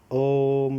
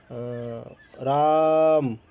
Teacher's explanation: जब किसी को दूर से पुकारते हैं, ठीक है। अंतिम स्वर को खींच कर लंबा कर देते हैं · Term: प्लुत स्वर